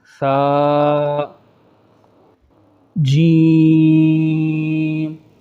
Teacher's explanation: جو باقی الفاظ ہیں ان کو ہم نے نارمل پڑھا، مگر جیم کو ہم نے کھینچا، تو یہ جیم کے آگے جو بریکٹ میں چھوٹا سا جیم آپ دیکھیں، اس میں مد ہے، جس کا ہم باقاعدہ آگے جا کر سبق پڑھیں گے۔